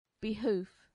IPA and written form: bɪˈhuːf (behoof)